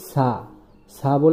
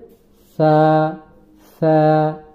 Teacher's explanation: এইযো সাটা একটু ভিন্ন রকম। আমাদের যে জিহ্বার আগাটা উপরের দাঁত সামনের উপরের দাঁতের আগার সঙ্গে লাগিয়ে সাটা উচ্চারণ করতে হবে। অনেকে আমরা বলি সালে এটা ভুল হবে।